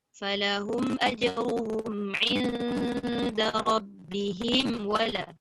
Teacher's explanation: pada inda rabbihim tu kalau nak sambung jangan didengungkan.